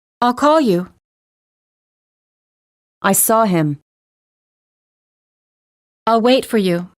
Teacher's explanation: Notice how the verbs are stressed the most and how the surrounding words have been reduced. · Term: Stressed verbs